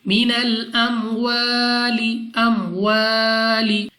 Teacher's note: وَنَقْصِمْ مِنَ الْأَمْوَالِ، الف مدہ، الف سے پہلے زبر الف مدہ، 2 سیکنڈ تک کھینچ کر پڑھنا ہے